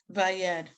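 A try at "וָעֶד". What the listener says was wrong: Okay, so the last word, there's no Y sound in it.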